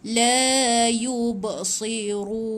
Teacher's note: ba ni bila mati berikan bunyi pantulan tu